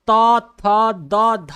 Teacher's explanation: आप त, थ, द, ध बोलेंगे तो आपका जबान दांत में सटता है, इसलिए ये दंत उच्चारण स्थान हुआ